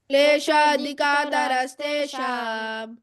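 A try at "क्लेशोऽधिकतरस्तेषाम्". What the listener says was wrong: It's not ka, okay? There's no a matra in the ka. So it's kleshodikataraste.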